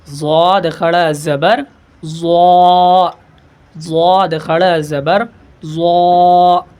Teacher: ضاد کھڑا زبر ضا، ضاد کھڑا زبر ضا، ایسے پڑھیں گے. یہ دال کے طریقے سے نہیں پڑھے گی، اسے یہ زبان کی رائٹ لیفٹ سائڈ سے جو ہے ادا ہوتے ہیں دانتوں سے